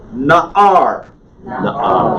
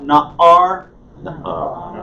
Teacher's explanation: Hear how that ayin is kind of a stop?